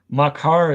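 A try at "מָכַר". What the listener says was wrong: Not makar, machar.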